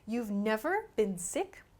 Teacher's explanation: So the emphasis here is on the word never with the voice.